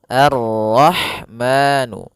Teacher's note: Pada bacaan Ar-Rahman, di sini ada alif lam syamsiyah, yaitu alif lam yang ditulis tapi ia tidak dibaca, sehingga kita langsung masuk ke huruf ra